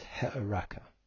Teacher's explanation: because it has a hard breathing there's an H sound on that Epsilon